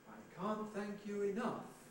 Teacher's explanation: in these april there's the onset i can't thank you enough thank has a rhythmic beat i can't thank you enough but no pitch prominence